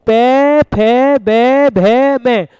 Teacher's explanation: पे, फे, बे, भे, में होठों से बोले जा रहे हैं, होठों का स्पर्श हो रहा है, तो इसलिए क्या हो गए, ओष्ठ्य।